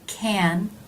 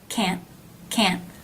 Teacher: can a little bit longer a little smoother versus can't can't a little shorter a little bit more abrupt